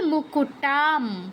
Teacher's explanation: প বর্গের অনুনাসিক ধ্বনি আছে, ম প বর্গের আন্ডারে পড়ছে, তাই অনুসারের জায়গায় ময় হসন্ত উচ্চারণ করতে হবে।